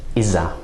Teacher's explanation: our ‘dhaal’ sort of elides into a ‘z’ sound